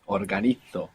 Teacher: that Z there is going to be pronounced th. Organizo in Spain.